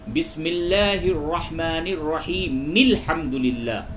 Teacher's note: اب بسم اللہ کو الحمدللہ والی آیت سے اگر ملائیں گے تو وہاں پہ پھر جو الحمد میں جو حمزہ ہے وہ گر جائے گا، اس کو اس طرح سے پڑھیں گے بسم اللہ الرحمن الرحیم مل حمدللہ، مل میم لام زیر مل، اب الحمد نہیں بولیں گے بلکہ مل حمدللہ بولیں گے۔